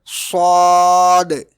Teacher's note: It is pronounced thickly with pressure from the tongue like sod.